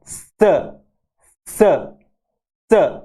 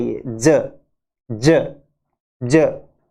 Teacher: स और ज में क्या फर्क है कि स वॉइसलेस है और ज ये वॉइस्ड है